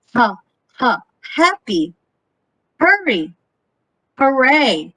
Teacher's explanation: So those are glottal fricative ha.